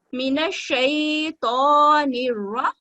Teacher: नी, मीन शैतान, नून को रा के साथ मिलाएंगे मजबूती से और फतह को 1 सेकंड का वक्त देते हुए पढ़ेंगे